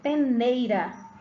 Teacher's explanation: entre o E e o I, você observa que o E é mais forte e o I é mais fraco. Então, um deles é vogal e o outro é semivogal. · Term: ditongo